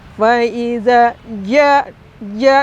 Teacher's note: dengan huruf Jim atau ja jadi ketika mengucapkannya faidza ja rasakan Tengah lisan kita bagian tengahnya lidah kita itu itu nempel ke rongga mulut atas Faza ja ja ditekan ke disentuhkan ke atas begitu ya itu